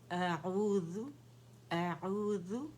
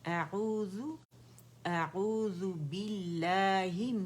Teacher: اور یہ اقص الحلق سے نکلے گا ہمارا حمزہ